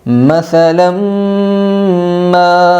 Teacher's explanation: یہاں پر ادغام مع الغنہ ہوگا، 2 زبر تنوین کے بعد جمن کے 4 حرفوں میں سے میم آئی ہے۔